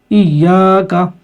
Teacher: تشدید کو تو پڑھنا ہی ہے 2 حرف 2 مرتبہ اور سختی کے ساتھ، لیکن یہاں پر الف مدہ ہے، اس کو بھی کھینچنا ہے